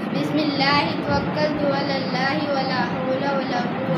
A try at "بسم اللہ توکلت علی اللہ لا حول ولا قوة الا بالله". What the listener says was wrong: ولا نہیں ہے، لا حول.